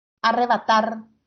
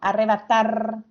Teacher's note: en la última sílaba porque dice arrebatar es la que suena más fuerte entonces es una palabra aguda pero va a llevar tilde o